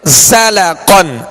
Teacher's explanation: زا کو سیٹی کی آواز میں سختی کے ساتھ ادا کریں گے